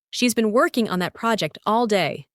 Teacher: The stress is on been, working, project, and day.